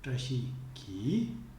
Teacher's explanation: Notice the intonation for the subject clause, the ki clause, trashi ki. See how the second syllable of trashi is not as stressed anymore as when we pronounce the word on its own.